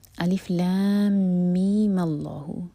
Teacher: میم جب ہم اگلی آیت سے جوڑیں گے تو میم کا لینتھ 2 ہی حرکہ ہوگی، تب اس پر مد لازم نہیں ہوگا۔